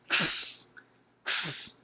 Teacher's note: So it's like a double consonant sounds, a K and an S. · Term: X sound